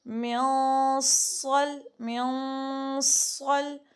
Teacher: اب یہ موٹا بھی کرنا ہے غنہ، کیونکہ آگے صاد آیا نا حروف احفا میں سے، تو غنہ موٹا کریں گے